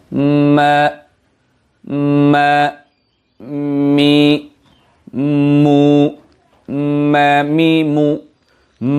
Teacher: মিমের মাখরাজ হলো দুই ঠোঁটের শুকনো জায়গা থেকে মিম উচ্চারিত হয়